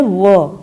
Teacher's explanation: नीचे वाला होठ और ऊपर वाले दांत आपस में स्पर्श करते हैं